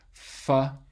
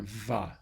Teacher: The F is voiceless, the V is voiced. That is a labial dental sound.